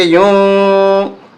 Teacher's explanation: یہاں اخفا ہوگا، ناک میں آواز چھپائیں گے